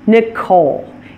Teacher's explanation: It stresses the second syllable since it's a name that came from the French language.